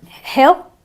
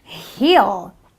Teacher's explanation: you have a hill, a short eh sound, and you have a heel, a long E sound